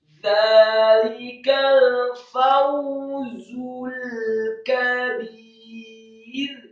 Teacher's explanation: huruf fa yang fathah 1 harokat dengan gigi seri atas kita ditempelkan dengan bibir bawah, kemudian waw yang sukun dengan posisi mulut agak tertutup dengan gerakan yang cepat.